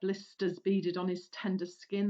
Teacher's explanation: there's quite a lot of sibilants in these lines giving a sinister tone